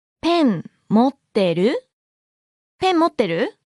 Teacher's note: Note the rising intonation.